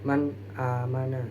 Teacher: Cara membacanya sendiri yaitu jelas tanpa adanya dengungan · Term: izhar